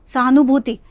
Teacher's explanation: इसमें नू कम लगा लेकिन भू ज़्यादा लंबा है